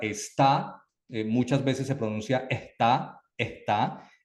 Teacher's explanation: es la omisión de algunas consonantes como la s por ejemplo en regiones caribeñas en regiones costeras eh se pronuncia o se omite la s o se pronuncia como de una manera aspirada